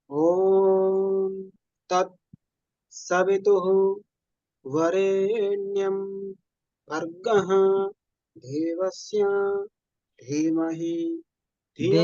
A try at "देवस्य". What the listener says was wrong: देवस्य ऐसा करके अनुनासिकांत में देवस्य ऐसा, श्या बोल रहे हैं आप, देवस्य।